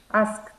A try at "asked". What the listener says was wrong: Asked con tie.